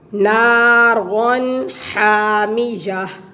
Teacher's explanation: تنوین کے آگے ہا حروف حلقی میں سے آ گیا تو ہم غنہ نہیں کریں گے